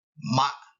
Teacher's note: Ma falls abruptly and heavily